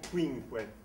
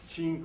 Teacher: il y a eu un phénomène de palatalisation du « que » qui est devenu « che » en Italie